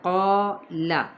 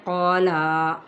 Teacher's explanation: قال، بعض لوگ کیا کرتے ہیں، قالا لمبا کر دیتے ہیں، نہیں، قا کو ہم لمبا کریں گے ایک الف کے برابر، یعنی بند مٹھی کی ایک انگلی بڑی آسانی سے کھل سکے، اور لام کی حرکت کو نہیں کھینچنا